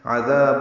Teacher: عذاب میں عین وسط حلق سے ادا ہوگا، دال نرمی سے پڑھا جائے گا، دال الف مدہ ہے، 2 حرکات لمبا ہے، تنوین کے بعد حمزہ آنے کی وجہ سے عذاب اظہار ہے۔